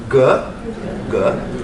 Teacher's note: Both velar sounds at the back of your throat.